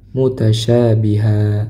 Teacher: Nah, di sini di akhir bacaan dibaca panjang dua harakat. Tanwinnya dihilangkan dibaca panjang dua harakat